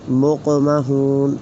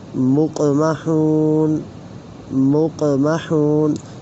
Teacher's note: مقمحون جو قاف ہے یہ ساکن ہے، 2 نقطوں والا، حروف قلقلہ میں سے ہے، تو اسے ہم ہلا کر پڑھ رہے ہیں۔